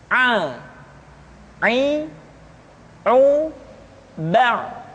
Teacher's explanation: pengucapan huruf Aa dikeluarkan dari tengah-tengah tenggorokan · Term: huruf Ain